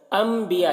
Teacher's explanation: نون کو میم سے بدل کر پڑھیں گے غنہ اخفا کے ساتھ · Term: اقلاب